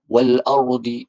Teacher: alif lam qamariyah dia menyebut huruf lam kerana ada tanda qamariyah.